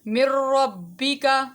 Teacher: یہاں پر ناک کے اندر آواز نہیں ٹھہر رہی تو اس کو ادغام بلا غنہ کہیں گے